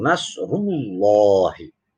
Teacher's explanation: Karena ada huruf ada huruf yang berharokat dhammah, di depannya ada lafaz Allah. Nah, lafaz Allah ini harus dibaca tebal. Karenanya ini disebut dengan lafzul jalalah tafkhim.